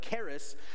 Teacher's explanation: I'm using the Hebrew guttural sound